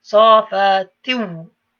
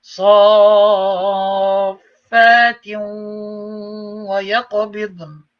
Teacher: There's no noon left, it goes straight into the waw. But because it is a waw, ya, mim, waw, noon, ghunna takes place. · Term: idgham